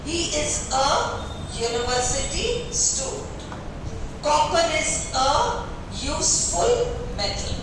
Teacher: भले vowel यू से शुरू हो रहा है पर उसका उच्चारण यह यमुना वाला है जो कि कॉन्सोनेंट है, इसलिए अपन ने अ लगाया।